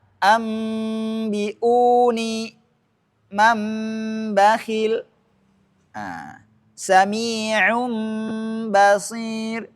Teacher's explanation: Artinya di sini nun berproses dirubah menjadi mim, kemudian bertemu dengan ba. Iqlab artinya merubah nunnya menjadi mim.